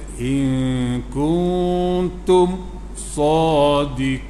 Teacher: mim mati bertemu selain daripada mim dan ba, nyatakan tutup mulut molek tanpa dengung